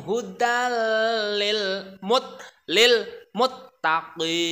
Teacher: Hudal itu ada tanwin bertemu dan huruf lam. Itu namanya idgham bila gunah, memasukkan dengan tidak mendengung